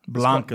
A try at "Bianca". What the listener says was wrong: not Blanca. It's not an L. It's Bianca.